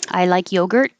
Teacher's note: i will hold the t if i just say it